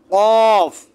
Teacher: জিহ্বার গোড়া তার বরাবর উপরে তালুর সাথে লাগিয়ে